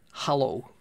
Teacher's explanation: i speak with a bolton accent where we flatten our our vowels